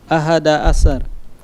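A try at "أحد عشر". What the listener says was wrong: Ahada asyar. Shinnya ditebalkan sedikit.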